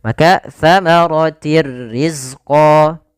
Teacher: tanwinnya kepada huruf ro tapi tidak ditahan dengan gunah makaartir rizqo ya kemudian di sini Kita juga namakan dengan Idgham · Idgham masuk artinya memasukkan bila gunnah tanpa disertai dengan gunnah. Sehingga hanya masuk saja tanwinnya kepada huruf ra tapi tidak ditahan dengan gunnah. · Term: Idgham Kamil, idgham bila gunnah